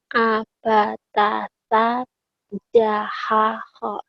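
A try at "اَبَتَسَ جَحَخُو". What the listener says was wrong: Oke, bagus.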